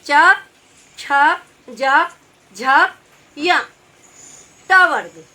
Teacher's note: चा वर्ग हमारा तालु से वो निकलता है। उस चा, छा हमारा जो जीभ के ऊपर का हिस्सा है वो हमारा इन व्यंजनों को बोलने में उपयोग होता है।